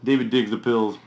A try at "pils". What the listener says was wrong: I dig the pills. Okay, you gotta say it right, because it sounds like I dig pills.